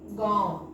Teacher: इसका उच्चारण करके देखो तो ग बोलेंगे फिर नाक से उच्चारण होगा आ फिर व होगा यानी पहले नाक से होगा फिर सॉरी मुह से उच्चारण होगा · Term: अनुनासिक